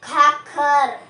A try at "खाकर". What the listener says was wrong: खाखर नहीं है, खाकर